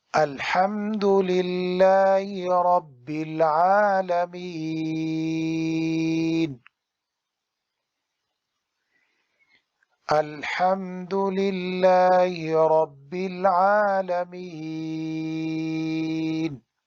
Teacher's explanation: مد عارض وقفی 3 الف کے برابر لمبا کریں گے